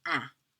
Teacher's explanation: the N's do not get pronounced if there's no E following it, and the vowel in front becomes nasalized